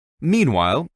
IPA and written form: ˈmiːnˈwaɪl (Meanwhile)